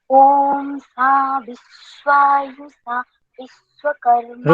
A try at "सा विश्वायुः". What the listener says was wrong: विश्वायु, इसको समय देना है पूरा। विश्वायु सा, ऐसे बोले।